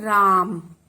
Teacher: माँ की साउंड कम आती है और रा की बड़ी आती है · तो रा पर हमने विशेष बल दिया, तो इसलिए ये रा हो गया। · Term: बलाघात